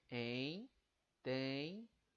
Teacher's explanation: essa última sílaba aqui, dia, ela se divide em duas vogais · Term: hiato